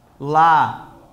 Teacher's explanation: A sílaba tônica é a segunda de trás para frente